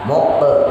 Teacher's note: Mukbe. Jadi bukan mukbo, bukan kubro, bukan pantulan penuh, tapi pantulannya setengah. Fahum mukbe mahun, hanya tipis. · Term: qalqalah sugro